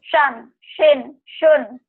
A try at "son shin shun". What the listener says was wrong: Bunyi o ya.